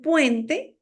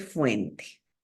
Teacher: Las oclusivas se cambian por fricativas. En lugar de decir fuente, en lugar de decir puente, me dice fuente. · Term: fricatización de oclusivas